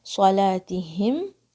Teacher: عن صلاتہم، تو اس کے لیے پریپیئر کرنے کے لیے آپ کی اخفا بھاری ہو جائے گی، صاد بھاری، لام الف 2 کاؤنٹس، صلاتہم، تا کے نیچے کسرہ ہے، ہا کی آواز حلق کے سب سے نیچے سے آئے گی ٹھنڈی سانس کی طرح